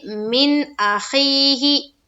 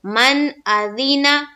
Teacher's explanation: اظہار حلقی ہوگا اس لیے کہ نون ساکن کے بعد حروف حلقی کے 6 حرفوں میں سے حمزہ آئی، اس لیے نون کی آواز کو ظاہر کر کے بلا غنہ کے جلد پڑھیں گے